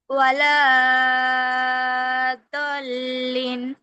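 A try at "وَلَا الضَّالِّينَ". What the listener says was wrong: না, ওয়ালা তো টান নাই আপু, দোয়াতে টান না। লামে টান নাই তো, লামে কি মাদ আছে? লামে কেন টানতেছো আপু? লামে টান হবে কি? তাহলে সেটা, হ্যাঁ যেখানে টান হবে সেখানে টান দিবা। ওয়ালা দলিন, এরকম।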